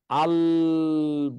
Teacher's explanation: পার্শ্বিক বলে এই কারণে, আমরা যখন ল বলি তখন আল বললে জিহ্বাটা দাঁতের গোড়ায় লাগে আর 2 পাশ দিয়ে বাতাসটা বের হয়ে যায়, এই জন্য বলে পার্শ্বিক বর্ণ।